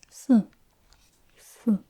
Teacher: That's the falling tone, the fourth tone. The fourth tone for the number 4.